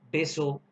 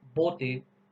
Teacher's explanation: Cuando tú usas la B labial, tienes que unir ambos labios.